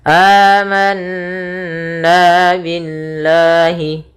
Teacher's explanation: Setiap lafal Allah bila didahului dengan huruf berharakat kasrah maka dinamakan dengan lam tarqiq, yaitu lam yang lam tipis, tidak dibaca dengan lam tebal. Sehingga di sini bukan lagi billah tapi billahi.